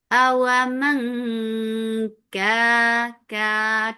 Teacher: You're hiding the sound of noon. You are going towards the makhraj of kaf. Awaman ka, two counts long, and kaf is light.